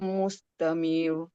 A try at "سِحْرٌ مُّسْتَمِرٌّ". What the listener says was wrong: مستمر. مستمر. Jangan tebal, nipis je. Mustamir.